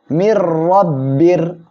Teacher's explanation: বা র দুই জের বীর। তানবিনের পরে ঈদগামে বেলা গুন্নার অক্ষর র আসছে, গুন্না ছাড়া মিলিয়ে পড়বেন